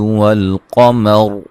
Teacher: را بھی وقفاً وصلاً موٹی ہوگی